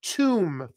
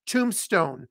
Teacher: It's called a tomb, and the B, silent. We don't pronounce the B, just an M.